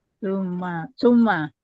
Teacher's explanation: Summa mim tasdidnya guna musyaddadah ya. Ditahan dengungnya tiga harakat di rongga hidung merupakan tingkat guna pertama gunah akmal ya. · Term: mim tasdidah musyaddadah